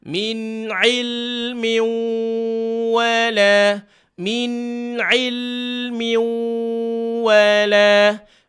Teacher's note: Dengung masuk ni dia mesti sampai hidung ni.